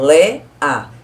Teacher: Na palavra Léa, não tem semivogal, que eu separo Lé, A. Eu falo todas as duas com bastante intensidade.